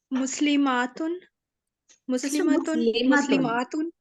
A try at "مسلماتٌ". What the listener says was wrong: مسلماتن، اس کو لمبا نہیں کھینچنا، ماں کو لمبا نہیں کھینچنا، کیونکہ آگے آپ نے الف تا کے ساتھ جب پڑھنا ہے نا تو وہ لمبا کھینچ کے پڑھا جائے گا.